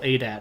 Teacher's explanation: I would put the emphasis on the on the first syllable